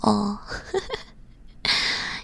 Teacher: there's an O with your mouth bigger, like it's as if you're about to say ah, but no, you're not.